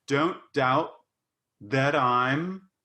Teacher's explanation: There you did a tapped R. You did the American that I'm, and that's great.